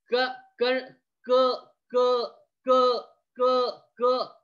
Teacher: सुरुवात करा क म्हणायचं च्या आधीच तुमची मागची जीभ जी आहे ना ती उचलल्या जाते · तुमची मागची जीभ जी आहे ना, मागची पडजीभ जी आहे ना ही उचलल्या जाते, ठीक आहे. आणि ती त्या पडजिभीच्या ज्या पुढच्या भागाला स्पर्श करते, इनडायरेक्टली ती कंठाला स्पर्श करते. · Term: कंठ वर्ण